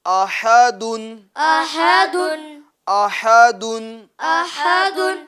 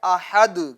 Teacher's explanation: اس تنوین کو ہم سکون میں بدل دیں گے